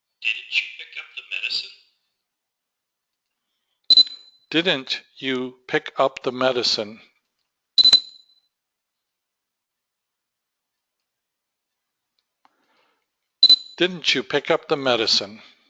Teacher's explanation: The negative contraction followed by the word you blends the contraction's final T with the pronoun's initial Y. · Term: palatalization